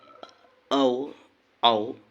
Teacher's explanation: ओठ को वृत्ताकार करके जिन स्वरों का उच्चारण होता है उन्हें वृत्तमुखी स्वर कहते हैं, या गोल स्वर कहते हैं, या ओष्ठ्य स्वर कहते हैं, या वर्तिलित स्वर कहते हैं।